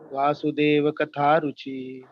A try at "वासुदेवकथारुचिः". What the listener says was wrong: Vasudeva Katha Ruchihi. Here you should say Ruchihi because it's the end of the statement.